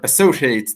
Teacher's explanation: in the word associates, the second syllable is stressed